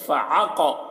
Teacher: عین کو حلق سے بول رہے ہیں